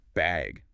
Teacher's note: they might ask, do you need a bag or even just bag with a rising tone